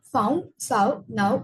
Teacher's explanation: the tongue moves in the direction of oo, and the lips start at the neutral position and gradually rounded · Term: back closing full diphthong